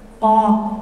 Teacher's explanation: Qaf itu seperti huruf kaf tapi lidahnya naik.